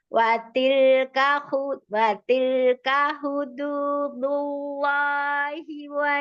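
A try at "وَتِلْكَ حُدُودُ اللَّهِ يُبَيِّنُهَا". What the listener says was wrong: Nggak ada wanya.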